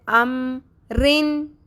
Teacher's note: جس طرح اسمائل کے سٹائل میں ہم لپس کو اسٹریچ کرتے ہیں، ہونٹوں کو پھیلاتے ہیں، اسی طرح ہم نے رو کو باریک پڑھنا ہے